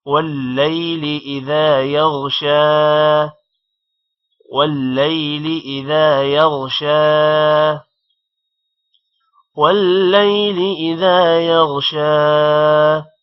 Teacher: شین پر کھڑی زبر ہے جس کی وجہ سے تھوڑا سا شین بھی لمبا ہوگا